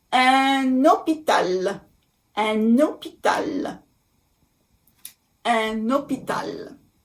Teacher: We make a liaison. I know the word hôpital starts with H, but the H in French is silent. So we don't care about the H.